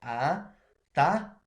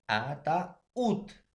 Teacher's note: Entonces, la mayor fuerza de voz lleva en la U.